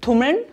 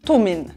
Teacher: Erstens wandeln wir den Konsonanten L in ein I um. Wir sagen also nicht tummeln, sondern tummin.